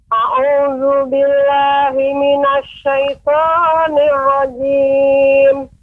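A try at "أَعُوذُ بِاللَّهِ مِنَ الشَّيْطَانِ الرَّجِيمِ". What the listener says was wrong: Ibu, pengucapan billah lebih ditasydidkan lagi. A'udzu billah, billah. Tidak terlalu pendek, billah, A'udzubillah ditekan. Billa.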